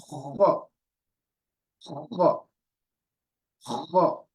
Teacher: I'm pronouncing the kha and I'm feeling it at the back of my throat